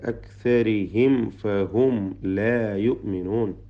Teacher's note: സാക്കിനായ മീമിനെ ഇൽഹാർ ഷഫവി, ഫായിന് മുമ്പിൽ സൂക്ഷ്മതയോടെ ഇൽഹാർ ചെയ്യുക.